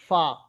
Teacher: তারপরে দেখেন ফা, ফার মাখরাজ দেখেন নিচের ঠোঁটের ভিজে অংশ উপরে দুই দাঁতের কিনারার সঙ্গে মিলিয়ে উচ্চারিত হয় ফা